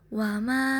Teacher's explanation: Pada ayat ketiga dalam surah Al-Qamariyah, wa ma namanya bacaan mad jaiz munfasil karena mad bertemu hamzah bentuknya alif dalam lain kalimat. Panjangnya boleh 2,5 alif atau 5 harokat